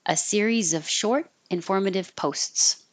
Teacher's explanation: I didn't connect the short tin formative because I'm taking a tiny pause between the list of adjectives